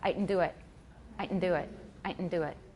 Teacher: it's a nasalized glottal stop